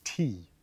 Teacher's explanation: that eth has actually gone silent in Norwegian. It is sometimes still spelled, but it is no longer pronounced.